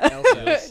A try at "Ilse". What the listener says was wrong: Not Elsa. Ilsa. I-L-S-E.